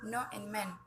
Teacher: Saluran oral diblokir dengan menekan ujung lidah ke alveolar ridge atau yang disebut dengan alveolar.